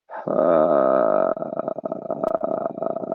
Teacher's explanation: we'll say that there's an uneven contact happening with the vocal folds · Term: vocal fry sound